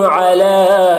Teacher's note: علا میں جو مد ہے اس مد کو مد منفصل کہتے ہیں، اس میں اس کو 3 سے 4 الف کے برابر کھینچ کر پڑھتے ہیں، اور 1 الف کے برابر بھی کھینچ کر پڑھنا جائز ہے۔